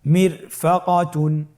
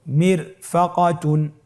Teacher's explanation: র সাকিন তার ডানে এসেছে জের এবং বামে কোনো মোটা হরফ নাই, এই জন্যে রকে পাতলা করে পড়তে হবে